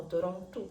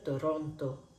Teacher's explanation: En portugués a veces la letra O hablamos con sonido de U.